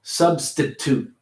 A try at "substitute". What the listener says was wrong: Substitute. Substitute. Toot. Substitute.